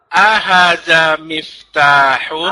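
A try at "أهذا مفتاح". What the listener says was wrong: A-nya pendek.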